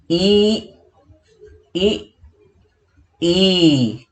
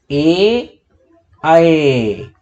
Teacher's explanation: जिन स्वरों का उच्चारण जीभ के अग्र भाग से किया जाता है, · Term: अग्र स्वर